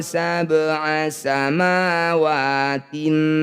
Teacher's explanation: bunyi ba pantulkan tapi kecil saja pantulannya mengalir jangan berlebihan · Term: qqolah sugro